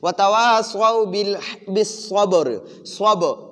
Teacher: صب با کو قلقلہ کرنا اور را کو پر پڑھنا کیونکہ را وقف کی وجہ سے ساکن ہو گئی اور اس سے پہلے والے با خود ساکن ہے اور